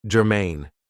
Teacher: this is 2 syllables, and the stress is on the second syllable